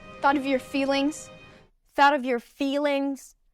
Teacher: She raises the pitch on feelings. That word is more stressed.